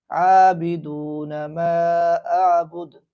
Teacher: عابدون غلط ہے، بلکہ عابدون ما اعبد۔ جب یہاں وقف کریں گے تو دال پر جو پیش ہے وہ ادا نہیں کیا جائے گا